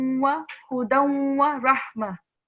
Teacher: So I joined the dal and the wa, the sound together, instead of saying hudan wa.